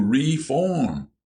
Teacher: William put the accent on the first syllable.